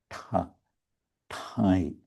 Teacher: This word tai, so there's Arodin Mahaprabhu Tara tai. There's this retroflex ta, which means the tongue goes on the roof of the mouth.